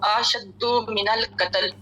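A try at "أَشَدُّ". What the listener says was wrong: इसमें लेकिन अशद्दु नहीं, अशद्दु नहीं, मतलब हम अलिफ के बाद दोबारा एक अलिफ बढ़ा रहे हैं तो ये लहन है, अशद्दु।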